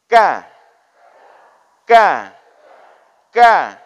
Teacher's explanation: masih sama di Pangkal lidah tetapi kena dengan langit yang sudah bertulang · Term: huruf Kaf